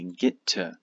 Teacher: these T's connect into one